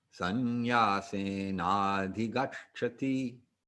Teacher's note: you're just going to double up on that CH sound and put a little air after the second one